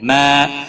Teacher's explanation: الف مدہ ہے، ایک الف کے برابر کھینچ کر پڑھیں گے۔